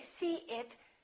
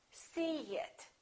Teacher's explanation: In this case, we put a little y, a little y sound.